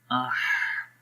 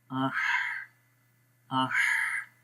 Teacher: تو ہا کے اندر کیا ہوتا ہے, جب ہم ہا کے پڑھتے ہیں تو اس میں تھوڑا سا سانس جاری رہتا ہے.